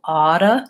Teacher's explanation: So the first vowel is different. When I'm saying ought to, it's an aw vowel, oughta, and it does become flap T and a schwa.